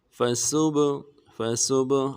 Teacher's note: با کے اوپر جب ساکن ہو تو قلقلہ کریں گے